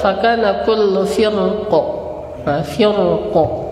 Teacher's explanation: kalau kita berhenti di kata firqin, itu kalau waqaf maka mereka sepakat dibaca tafkhim